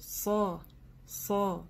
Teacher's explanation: Поэтому после буквы ГУ мы переходим сразу на удвоение САД. САД – твердая буква. И внимательно, что мы не говорим СО, СОМЭД, не вытягиваем губы.